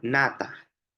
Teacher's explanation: En este caso, el fonema en nata es una nasal alveolar.